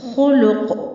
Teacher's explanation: और कौफ भी हुरूफ कलकला में से है, इसलिए थोड़ी सी हरकत देकर वक्फ करेंगे।